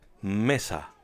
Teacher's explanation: one if a word ends with a vowel n or s the stress falls on the second to last syllable